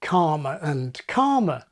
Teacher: WE, of course, lost the distinction between calmer and karma, due to historic r-dropping